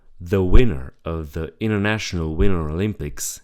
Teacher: The glottal T. The T is completely cut out when there is an NT plus a vowel. This is common but also optional.